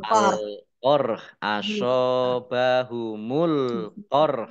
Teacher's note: kalau dibaca wakof berarti rok sukun dan haknya juga sukun, maka dibaca antara rok dan hak